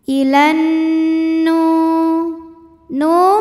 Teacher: yaitu Nun maka alif lam lewat tidak kita baca Ilan kemudian nunnya gunah musyaddadah atau wajibul ghunah karena Nun tasdid maka dibacanya dengung · nunnya gunnah musyaddadah atau wajibul gunnah karena nun tasydid, maka dibacanya dengung. Ilan nu. Nu mad tabi'i dhahiri karena nun berharokat dhammah bertemu waw sukun, maka dibaca panjang 2 harokat.